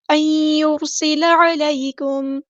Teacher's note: نون ساکن کے بعد یا آیا ہے، یہاں پر ہم نے ادغام کرنا ہے، ادغام مع الغنہ، ایک الف کے برابر رکیں گے ادغام کرتے ہوئے.